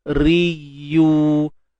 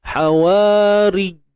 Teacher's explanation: Ya ada sifat rakhawah, alirkan suara.